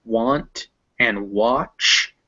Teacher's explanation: now if it's after a w sound it's normally an ah